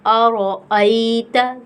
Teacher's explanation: یائے لین ہے، تو یائے لین کو ہم نرمی کے ساتھ پڑھیں گے اور ایک الف کی مقدار کھینچ کر پڑھتے ہیں